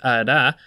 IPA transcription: ɾ